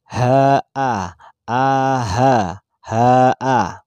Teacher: Hamzah sama dengan ha, makharijul hurufnya.